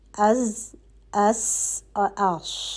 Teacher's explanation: ٹھیک ہے, زبان جو ہے وہ دانتوں سے نہیں ٹکرانی ہے. آپ کی زبان جو ہے وہ آپ کے اوپر اور نیچے کے دانتوں کے درمیان میں آ کے پیچھے سے پھنس رہی ہے, اور اس کے جو ہے وہ سیٹی کی آواز پیدا ہو رہی ہے, اور آپ کی زبان کی نوک جو ہے وہ کہیں پہ بھی نہیں لگی ہوئی, آپ کی زبان کسی دانت سے نہیں ٹکرا رہی ہے. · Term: سیٹی والے حروف